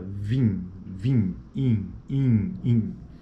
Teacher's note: esse i é uma vogal eh tônica nasal em final de palavra